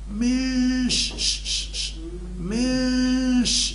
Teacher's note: يسمى هذا اخفاء بغنه مع التهيئ للنطق بالحرف الموالي اللي هو الشين